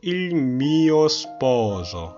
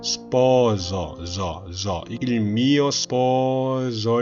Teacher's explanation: sposo 할 때 O와 O 사이에 있는 S는 유성음 S입니다. 최대한 부드럽게 목을 울려서 내줘야 됩니다. 그냥 시읒이 아니고 마치 지읒으로 들리는 시읒 발음으로 해줘야겠죠.